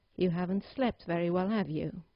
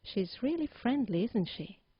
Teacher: the second usage of a question tag is to reinforce a statement you have made and get agreement from your listener. In this case, you need to use a falling intonation